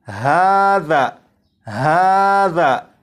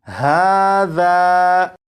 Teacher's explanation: ذال پر جیسے ہی پہنچے تو آواز ختم